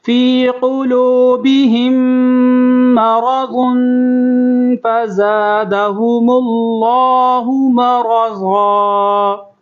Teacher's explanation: میم ساکن کے بعد میم تشدید ہے، اس کے اوپر تشدید ہے تو یہاں پر غنہ ہوگا